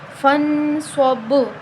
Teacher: با کی آواز پلٹ رہی ہے، اس کا مطلب کہ ہم اس پر قلقلہ کر رہے ہیں، اس کو ہلا رہے ہیں